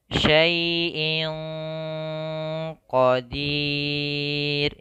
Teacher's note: menyamarkan suara nun kepada huruf setelahnya, yaitu huruf qaf. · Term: ikhfa